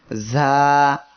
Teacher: এর মাখরাজ হলো জিহ্বার আগা, সামনের নিচের 2 দাঁতের পেট ও আগার সঙ্গে লাগিয়ে ঝা উচ্চারিত হয়। আমরা সবাই জিহ্বার আগা, সামনের নিচের 2 দাঁতের পেট ও আগার সঙ্গে লাগিয়ে একসাথে উচ্চারণ করি, ঝা।